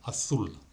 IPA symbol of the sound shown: θ